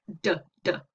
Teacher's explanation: my tongue is just behind my teeth kind of on the alveolar ridge